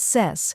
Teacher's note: Next is ses, which rhymes with mess and carries the main stress.